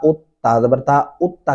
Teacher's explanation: आपने अलिफ पेश उ से पढ़ा उत्ता तो आप उत्ता ही पढ़ेंगे इत्ता या अत्ता नहीं बोलेंगे